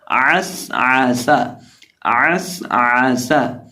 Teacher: جو عین ہے اس کو ہم حلق کے وسط سے ادا کریں گے، اور سین کے اندر سیٹی پیدا کر کے پڑھیں گے